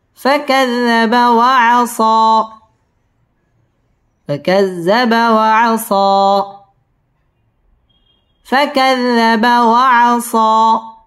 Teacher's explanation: وعصى মধ্যে তবাই একালিফ টেনে পড়তে হবে